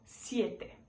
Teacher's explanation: Entre o s e o e tem um izinho.